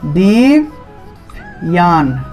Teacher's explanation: অন্তস্থ জফলার উচ্চারণটা ইয় রূপে হবে